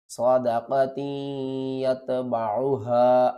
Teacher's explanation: تا کو یا کے ساتھ ملائیں گے بھی اور ساتھ میں غنہ بھی کریں گے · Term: ادغام مع الغنہ